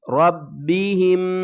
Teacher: را کو پر پڑھیں گے, با کے ساتھ سختی کے ساتھ ملائیں گے